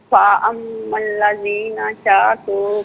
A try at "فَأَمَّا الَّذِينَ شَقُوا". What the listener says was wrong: شاقو نہیں ہے، شقو، شقو،